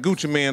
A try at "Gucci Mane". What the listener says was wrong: Gucci Mane, man. Gucci Mane. Ain't no man. Gucci Mane. Gucci Mane.